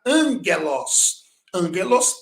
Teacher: quando o gama aparece antes de outra consoante gutural, por exemplo, um agrupamento de gama e gama, gama capa, gama xi e gama ki, ele vai ter o som de N. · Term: gama nasal